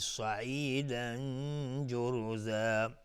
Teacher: صاد از حروف استعلاس غلیظ تلفظ میشه. تنوین بر جیم اخفای حقیقی و جور و را اینجا حکمش استعلاس چون ضمه داره.